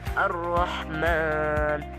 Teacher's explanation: huruf lam tersebut harus dibaca idgham atau tidak dibaca jelas masuk ke dalam huruf berikutnya atau bunyinya melebur ketika menghadapi beberapa huruf hijaiyah. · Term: alif lam syamsiyah